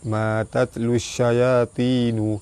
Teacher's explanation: Matatlus syayatinu, pada atas bertemu alif mad asli panjang 2 harakat. Alif lam bertemu dengan shin. Alif lam syamsiah, cara baca dia terus masuk ke shin.